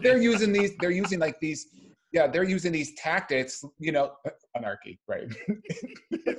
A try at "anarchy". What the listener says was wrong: Wrong emphasis on the wrong syllable.